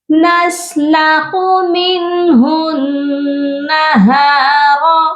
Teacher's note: نون مشدد پر غنہ لازمی کیا جاتا ہے